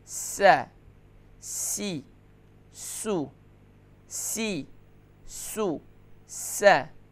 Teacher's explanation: آخر میں ہا کی آواز بھی نہیں آنی چاہیے